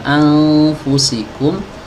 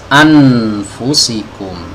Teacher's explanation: Apabila ada nun mati bertemu dengan huruf fa, itu kan ikhfa. Anfu, ditahan, kemudian didengungkan, ya, dibuat semacam suara sengau gitu ya